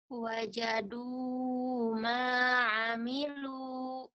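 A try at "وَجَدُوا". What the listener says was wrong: kalau bisa diayun ya, jangan kepanjangan. Du, diayun.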